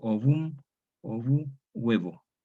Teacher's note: se da cuando una O tónica abierta diptonga en U, ue. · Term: diptongación